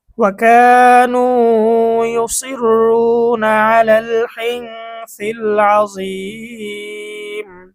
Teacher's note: মদের হরফের পরে ওয়াকফ করার কারণে মধ্যে আরজি তিন আলিফ টান।